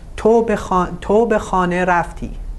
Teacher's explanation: Here the intonation of the sentence is falling. You say تو به خانه رفتی. You know, it's almost falling at the end. But if you change the intonation to rising intonation and putting the stress at the end of the sentence, specifically the verb, you have a yes-no question.